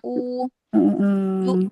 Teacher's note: pangkal lidah udah pasti terangkat kalau kita mengucapkan huruf mat yang wau, yang u